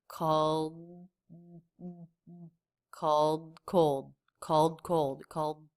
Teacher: So it's just this D sound in the throat. My tongue is up in position, but I'm not releasing it.